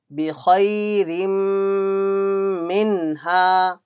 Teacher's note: Mim came after Tanween, there will be Idhgame Naqis. Idhgam with Gunna.